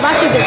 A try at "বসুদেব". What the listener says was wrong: এটা মানে কাছাকাছি গেছে কিন্তু উচ্চারণটা ভুল হইছে বাসুদেব হবে না বসুদেব হবে